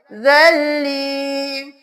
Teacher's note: جب بھی ساکن اور مشدد دونوں ساتھ ساتھ آئیں گے ہم ساکن کو چھوڑ کے مشدد کو ترجیح دیں گے، ہم زا کو لام کے ساتھ ملائیں گے، زا زبر لام زل، لام زیر یا لی، زل لی، زن لی یہاں پہ نہیں کرنا، زا کے بعد لام کی آواز آئے